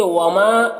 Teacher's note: ما میں الف مدہ ہے تو اسے ایک الف کے برابر کھینچ کر پڑھیں گے